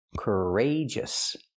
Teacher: We see the stress on the second syllable, rage.